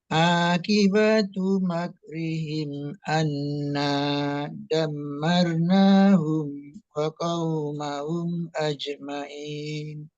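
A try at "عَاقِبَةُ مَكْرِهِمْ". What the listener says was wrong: di sini ya apa namanya ain ya itu makhraj terus qaf juga ya ain qaf a a aqibatu makrihim jangan sampai seperti hamzah kalau hamzah a dia a kalau ini adanya di tengah-tengah tenggorokan tempatnya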